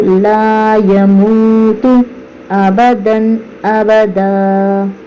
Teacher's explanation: کے بعد حروف حلقی میں سے حمزہ آ رہا ہے، تو لا یموت ابداً ابدا غنہ کرے بغیر پڑھیں گے۔